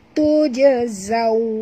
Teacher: Tuj bukan tush tapi tujazaw ya. Zaw waw adalah lin sifatnya, maka muncungkan mulut. Tujazaw ya.